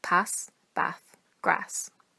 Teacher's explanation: the majority of speakers from this region use a short a rather than a long a